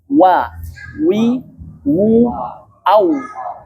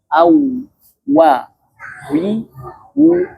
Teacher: Waw ini adalah huruf yang memiliki sifat jahar, tidak ada udara ya.